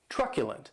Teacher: That last syllable has the schwa